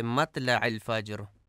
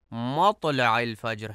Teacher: مطلع میں توئے کو تے پڑھا جاتا ہے، مطلع الفجر جو کہ درست نہیں ہے.